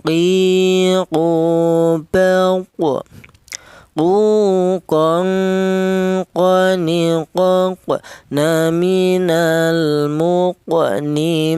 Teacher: huruf qaf ini keluarnya huruf berasal dari pangkal lidah ya. Pangkal lidah itu lidah bagian belakang, di mana lidah bagian belakang itu ditempati 2 huruf, yaitu huruf qaf dan huruf kaf ya.